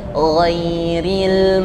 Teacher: rukhwah itu suaranya mengalir tidak terhenti tetapi bukan Hames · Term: gain